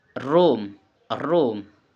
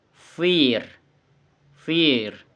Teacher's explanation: Okay, the explanation r is voice, alveolar, and approximant. The tongue is near but not touching the alveolar ridge. Air flows freely.